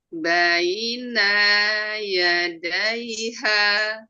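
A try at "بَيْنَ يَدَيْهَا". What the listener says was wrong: Huruf nunnya jangan dipanjang. Baina yadai. Hanya ketinggalan.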